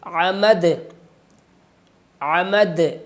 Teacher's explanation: یہ جو آواز ہلا کر پڑھی جا رہی ہے اس کو کہتے ہیں قلقلہ